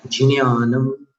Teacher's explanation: यहाँ पर ज्ञान नहीं बोलना है, ज के बाद न्या बोलना है। न्या में नासिका का स्पर्श आएगा